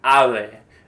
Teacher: when it comes between two vowels, it's a weak sound where your lips don't fully touch